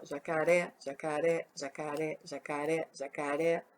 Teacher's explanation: O oré vai lá em cima. O oré é a sílaba mais forte da palavra jacaré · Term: sílaba tônica